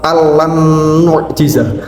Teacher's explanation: bacanya harus melebur namun tanpa mendengung. Sehingga kita tidak diperbolehkan membaca al lan nu'jiza dengan adanya dengung. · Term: idgham bilaghunnah